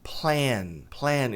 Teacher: Esse a tem som longo de e.